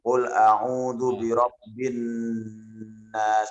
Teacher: Mohon ditahan sedikit pada nun yang bertasdid.